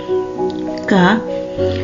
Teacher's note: Udara dihentikan di belakang oleh pangkal lidah yang menempel pada langit-langit lunak, kemudian dilepaskan